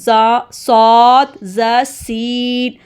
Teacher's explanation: زا میں زبان کی جو ٹپ ہے وہ نیچے والے دانتوں کی اندرونی کنارے کے ساتھ لگتی ہے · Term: ٹپ آف دا ٹنگ